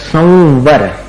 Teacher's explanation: संवर व में मिलाना पड़ता है अनुस्वार का उच्चारण